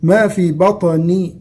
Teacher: الطاء من حروف التفخيم، حروف التفخيم أيضا ومن حروف القلقلة لأنها ساكنة الآن، ما في بطني وليس بطني، هذا خطأ.